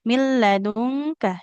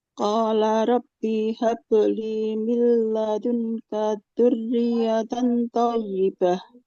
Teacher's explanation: Di sini kafnya nggak boleh panjang. Huruf berharokat fathah panjang kalau ada alif ya di depannya.